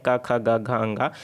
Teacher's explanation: अगर कंठव्य की बात करूँ तो जो क वर्ण आते हैं क ख ग घ अंगा, तो जितने हैं वो क्या हो जाते हैं, कंठ में आ जाते हैं